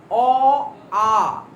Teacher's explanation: অ আ কণ্ঠে উচ্চারণ হয়, এটা হচ্ছে কণ্ঠ